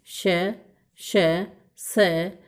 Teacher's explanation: इन वर्णों के उच्चारण के समय वायु की रगड़ से मुख से ऊष्मा निकलती है। जब इनका उच्चारण किया जाता है तो उच्चारण के साथ ही मुख से ऊष्मा निकलती है, गर्म वायु निकलती है, ऊष्म व्यंजन कहलाते हैं और इनकी संख्या भी 4 होती है।